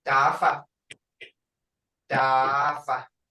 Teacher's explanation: Creek is the Creek T is unaspirated, sounding to English speakers as though we're halfway between a D and a T